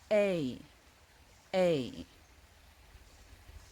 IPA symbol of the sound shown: eɪ